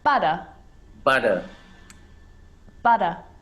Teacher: australian english if you think about words like butter butter butter the r at the end of the word is not pronounced